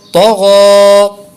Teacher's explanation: دو حروف مستعلیہ ہیں، دونوں کو پر کریں گے اور غین پہ کھڑی حرکت ہے اس لیے اس کو لمبا کریں گے